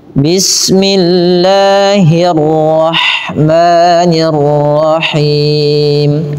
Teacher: bila lafal Allah didahului dengan kasrah maka dibaca dengan tipis. Bismillah, tidak dibaca bismillah.